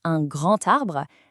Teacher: notice how the D sound actually morphs into a T sound